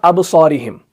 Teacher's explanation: با جو ہے یہ اس کے اوپر سکون ہے، یہ ساکن ہے، تو بیچ میں آ رہا ہے، تو یہاں پر جو قلقلہ ہوگا وہ ویک ہوگا، وہ زیادہ سٹرونگ نہیں ہوگا